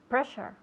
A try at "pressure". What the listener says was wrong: Good. Very good.